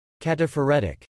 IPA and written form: kætəfɹ̩ɛtɪk (Cataphoretic)